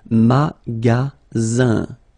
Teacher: Then you get the sound Z, all right? And then the ending here is I-N, so it's nasal, goes in your nose, and it's un.